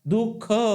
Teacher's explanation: तुम्हाला कंठामध्ये येतो म्हणून त्याच उच्चार स्थान कंठ दाखवल्या जाते कारण या विसर्गाचा उच्चार करत असतानी ह नावाच्या वर्णाचा उच्चार होतो